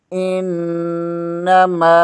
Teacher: حمزہ زیر کو نون کے ساتھ ملائیں گے، نون مشدد ہے، اسے 2 بار پڑھیں گے۔ میم زبر کے آگے الف مدہ ہے، اس کے اوپر ایک چھوٹی سی مد بھی ہے، اسے 2.5-3 الف کے برابر کھینچ کر پڑھیں گے